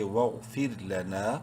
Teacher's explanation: منہ بھر کے پڑھیں گے، بولڈ لیٹر ہے، فا رازر پھر رو کو باریک پڑھیں گے کیونکہ رو ساکن سے پہلے زیر ہے